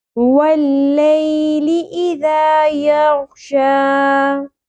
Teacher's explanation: ذال نرمی سے ادا ہوگا، سیٹی یا بزنگ ساؤنڈ نہیں آنی چاہیے، یہ والی ساؤنڈ نہیں ہوگی.